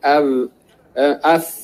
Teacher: gigi atas dengan perut bibir bawah